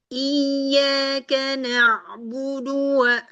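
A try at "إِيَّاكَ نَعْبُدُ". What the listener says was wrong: Dalnya masih lepas. Terus satu lagi, ya tasydidnya ini harus sedikit ditekan ya. Untuk menunjukkan bahwa sia ini dia bertasydid. Jangan iyakah.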